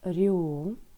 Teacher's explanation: Приголосний ми вимовляємо м'яко, а буковка Ю позначає звук У.